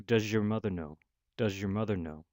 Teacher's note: the Z sound at the end of does, and the Y sound at the front of your combines together to make a third sound, J sound. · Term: palatalized fricative